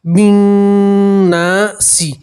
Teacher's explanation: بن ناسی، اب دیکھیے نون کے ساتھ الف مدہ ہے تو الف مدہ میں ایک الف کے برابر کھینچتے ہیں · آپ نون کی آواز کو 2 سیکنڈ کے لیے ناک میں روکے رکھیے، اس سے گنہ ادا ہوتا ہے۔